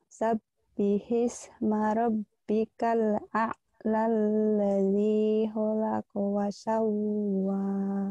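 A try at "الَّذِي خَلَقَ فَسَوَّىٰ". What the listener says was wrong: Fa bukan wa, fa. Fasawa.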